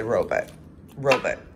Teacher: i say robot robot because it's a unstressed second syllable and i'm from the midwest